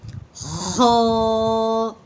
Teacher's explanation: ٹھیک ہے، آگے خو کا مخرج یہ ہوگا کہ ایک سادے لفظوں میں بتاتی ہوں کہ خو کا مخرج جیسے ہم گلے کو صاف کرنے والی آواز نکالتے ہیں، خو ایسے آواز نکالتے نا کہ ویسے رگڑ کے نکلے گا